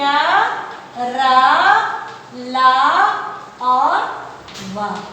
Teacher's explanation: इसमें वायु जो होती है मुख से थोड़ी रुकावट के साथ बाहर निकलती है। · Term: अंतःस्थ व्यंजन